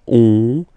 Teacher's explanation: And then when you get this O-N combination, you get this nasal on, really in your nose